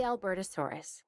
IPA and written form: ælˌbɜːrtəˈsɔːrəs (Albertosaurus)